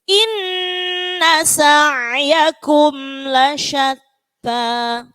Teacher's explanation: Nih, tak sama ada hembusannya la syatta, ta. Jangan ta, tapi ta ada hembusnya sedikit